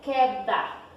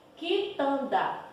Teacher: quando eu vou falar na pronúncia eu não falo o som da letra u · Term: dígrafo